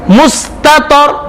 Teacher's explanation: पहले ता है फिर तो है, बारीक फिर मोटा पढ़ना है, लेकिन इस लफ्ज में भी कलकला कहीं भी नहीं है कि हुरूफ कलकला पर जज़म नहीं है।